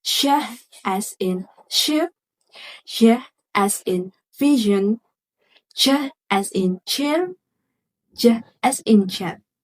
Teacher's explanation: These sounds create a slightly hushing or rushing airflow, especially sh and j. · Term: post-alveolar sounds